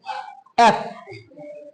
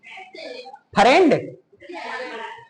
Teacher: ये दोनों होंठ सटते नहीं है,